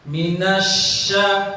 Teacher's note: Ini salah. Shin makhrajnya bukan 2 bibir, tapi di tengah lisan.